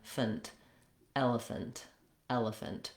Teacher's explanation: It is typically a schwa or an I sound, but the reduced vowel is very short, and I'm almost going right from the f to the n, fnt, elephant, elephant.